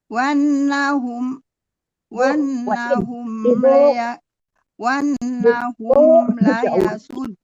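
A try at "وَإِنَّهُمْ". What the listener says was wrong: Bukan wa in lihat hurufnya jangan sampai ditinggal-tinggal. Wa innahum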